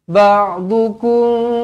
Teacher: Ikhfa Syafawi dengungkan dua harakat